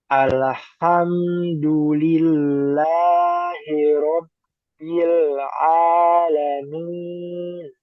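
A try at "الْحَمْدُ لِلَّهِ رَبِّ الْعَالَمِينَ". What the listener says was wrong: Nah, lamnya kurang ditempel. Alham segitu. Alhamdu.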